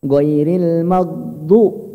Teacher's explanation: go itu nggak ada qalqalah ya, nggak ada pantulan